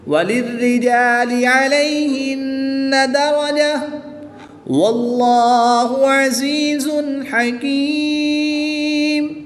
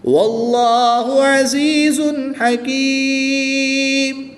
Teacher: اللہ عز و جل کے لام سے پہلے حرف پر زبر ہے تو اس لام کو پر یعنی موٹا پڑھیں گے، لام کے اوپر کھڑی زبر ہے تو اس لام کو 1 الف یعنی 2 حرکات کے برابر کھینچ کر پڑھیں گے۔